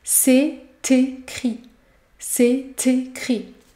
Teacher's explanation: Ici, vous devez effectuer la liaison et prononcer la consonne T.